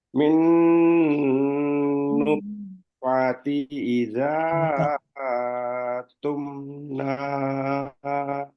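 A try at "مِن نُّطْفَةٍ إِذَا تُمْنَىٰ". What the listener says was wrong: Iza aja. Nggak pakai A. Iza tumna ya? Ya, Iza aja.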